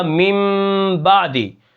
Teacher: یہ جو نون کی آواز ہے یہ میم کے اندر تبدیل ہو جائے گی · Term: اقلاب